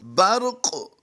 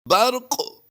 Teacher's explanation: یہاں پر ہم نے قاف کو پر بھی کرنا ہے اور قلقلہ بھی کرنا ہے